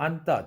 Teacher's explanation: 앉다도 그냥 앉다 뒤에 자음 오면 니은 발음만 나죠. 그런데 앉아서 할 때는 이 지읒 발음이 다시 살아나요.